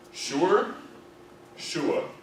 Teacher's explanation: So it's almost just with very little R in it. I don't even pretend it's there.